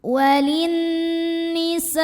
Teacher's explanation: Maka sinnya ini dipanjangkan boleh 4 boleh 5 harokat. Tidak boleh 2. Jadi wajib lebih dari 2.